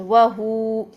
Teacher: تو جب اس طرح سے ہمارے پاس کنڈیشن آتی ہے کہ واو ساکن ہو، اس سے پہلے پیش ہو، تو اس کو بھی وقف کی صورت میں ہم لمبا ہی کریں گے. جب ہم اس پر وقف کر رہے ہیں تو واو کی حرکت ڈراپ ہو رہی ہے، پیچھے ہمارے پیش ہے، تو ہم اس کو 2 حرکات تک لمبا کر کے پڑھیں گے، وہو، یوں پڑھیں گے.